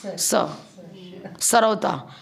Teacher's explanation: सरौता वाला स, दांत से बोलेगा।